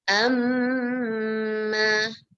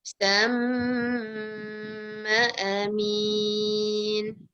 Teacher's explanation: Stress the mim sound with gunnah. Humming in the nose for 2 beats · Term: mim syaddah